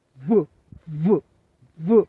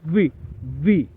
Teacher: వీటిని పలికేటప్పుడు మనం ఎలా పలకాలంటే, వి అని పలికేటప్పుడు మన ఈ ఈ టీత్ రెండు టీత్స్ని పెదానికి టచ్ చేయాలి. వి వి అన్నప్పుడు వైబ్రేషన్ రావాలి. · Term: వి సౌండ్